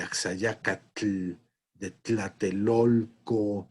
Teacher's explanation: el fonema tl, palatal africado